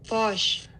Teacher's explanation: The vowel is open O. Posh, And you can kind of hear R flavoring in the open O